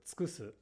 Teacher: For example, in the verb tsukusu, the downstep occurs on the ku. Now, because the second u here is between a k and an s, it should get devoiced, but again, it's okay to pronounce it as tsukusu because the downstep falls here.